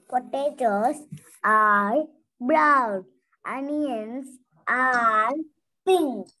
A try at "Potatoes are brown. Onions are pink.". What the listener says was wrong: Don't drag the word are. One more time.